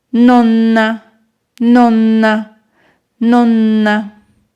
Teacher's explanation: la sílaba que alargaremos será na